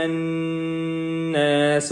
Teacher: یہاں قاف موٹے والا ہے، اور یہاں پہ ہا سینے والی یا حلق والی نہیں ہے، اور آگے نون کے اوپر تشدید کی وجہ سے دوبارہ سے غنہ کریں گے